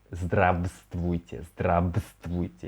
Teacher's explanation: We say it like здравствуйте, so it seems that we remove this v. So without this v, здравствуйте, здравствуйте.